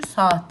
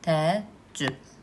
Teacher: Bu zaman nə baş verir? Saitlərdən biri düşür, digəri isə uzun tələffüz olunur.